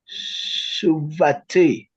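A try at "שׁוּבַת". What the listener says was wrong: Let's hear that first syllable again. So this is actually not a shurik. It's a vav with a dagesh. And the only reason that I know that is because there are two vowels associated.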